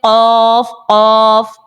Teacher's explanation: जब भी जुबान की जड़ तालू के नर्म हिस्से से लगती है तो कौफ हमारा निकल आता है